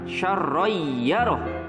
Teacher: Contoh yang kedua ada pada kata syarrayyarah, yaitu fathah tain yang bertemu dengan huruf ya, maka fathah tain ini dileburkan menjadi huruf ya. Jangan lupa bacanya ditahan, syarrayyarah. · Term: idgham bi gunnah